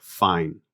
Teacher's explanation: the word fine, we could say like fine with a low tone, and it really means you're not fine